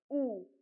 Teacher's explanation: this U is like a a tight ooh sound and your lips will be pushed forward